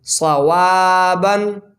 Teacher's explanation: عین زبر ع، لام یا زبر لئی، علی، ہا زیر ہی، علیہ، یالین، صاد زبر صا، واو الف زبر وا، صوا، با 2 زبر بن، صوابن، صاد حرف مستعلیہ میں سے ہے، الف سے پہلے زبر ہے، الف مدہ، 2 سیکنڈ کھینچ کے پڑھیں گے